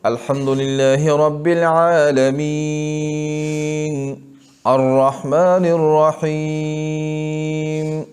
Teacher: اس میں افضل طول ہے، پھر توسط، پھر قصر، یعنی ایسے پڑھو